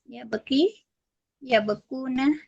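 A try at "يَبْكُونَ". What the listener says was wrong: nah, bukan ya bukan ya bekau tapi ya buku kafnya jadi dhammah. Ya, berubah jadi dhammah ya bukuna. Asal yabki yabkuna.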